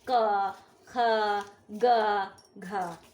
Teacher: हमें जीभ का पिछला हिस्सा गले को छूता है इसे बोलने के लिए। जैसे देखो, आप खुद बोलोगे तो ग, क, पीछे का एक उठ रही है ना जीभ, वो हिस्सा गले को छूता है, तब ये साउंड निकलते हैं।